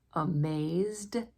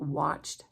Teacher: Amazed has the D sound, but watched has the T sound.